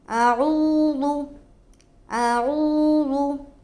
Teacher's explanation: آ کو بہت زیادہ نہیں کھینچنا ہے کیونکہ اس کے اوپر زبر کی حرکت ہے اور زبر کو جلد ادا کرتے ہیں۔